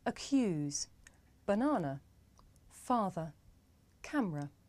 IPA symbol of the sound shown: ə